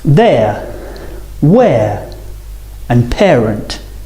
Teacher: both the vowels are on the same row so the mouth doesn't open or close